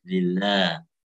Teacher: Lillah kasrahnya tipis, lafzul jalalahnya juga lamnya itu tipis juga.